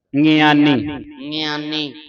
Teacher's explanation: ਇਹ ਨੱਕ ਦੇ ਵਿੱਚ ਬੋਲਿਆ ਜਾਣਾ ਸ਼ਬਦ ਗਿਆਨੀ